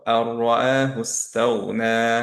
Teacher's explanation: ওকে, যেমন হচ্ছে এক্সাম্পল, এখানে আন রাআহু, এটা ছিল ওয়ার্ডটা ইনিশিয়ালি। এখন আনের নুন সুকুনটা আমরা র এর সাথে কমপ্লিট মার্জ হয়ে যাবে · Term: কমপ্লিট ইদগাম